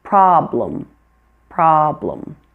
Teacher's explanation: And problem, the E is also a schwa.